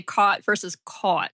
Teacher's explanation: the cot-caught merger, I have the cot-caught merger.